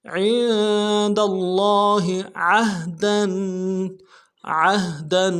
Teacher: دال کو لفظ اللہ کے لام کے ساتھ ملانا ہے، لفظ اللہ کے لام کے اوپر تشدید زور دیں گے، اگلے لام کے اوپر کھڑا زبر ہے، ایک الف میں کھینچیں گے ، ہا کو نرم سے ادا کریں گے، عند اللہ عہدا،